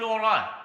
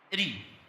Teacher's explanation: تاره نقول ار ننطق الراء مفخمه ونقول را نقول ار نقول رو وتاره ننطق الراء مرققه فنقول ار ونقول ري